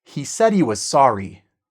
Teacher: when it's in the middle and it's not stressed, when it's unstressed, we cut the h